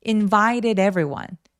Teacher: invited 할 때 t가 뭔가 굴러가는 소리가 나죠. invited.요 T가 모험사에 끼어서 굴러가는 소리를 낼 수 있다.